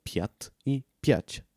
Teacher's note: две думи, които се различават единствено по един звук по отношение на палтализацията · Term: минимална двойка